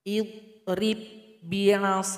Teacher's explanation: ba yang pertama sudah tergabung kepada ba yang kedua. Maka ba yang kedua yang kita baca. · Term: idgham mutamathilain